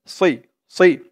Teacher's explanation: যাবে না, সি বললে কিন্তু সিনের উচ্চারণ হয়ে যাবে, সজ্জের সই, মুখটা একটু গোল হয়ে যাবে, ভরপুর হয়ে যাবে এমন মনে হবে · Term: সদের উচ্চারণটা